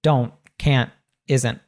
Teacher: we'll pronounce that T as what's called a glottal T. It's a sound that's cut off at the back · And so instead of saying don't, which a lot of learners I hear say don't or can't or isn't, we don't say that strong T in American English. We'll say don't, can't, isn't